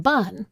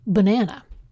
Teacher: You can hear this stress difference between the uh sound in bun and the first syllable of banana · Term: schwa